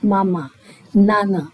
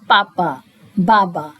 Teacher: when I'm saying mama, I'm speaking from my nose. You can hear the nasal voice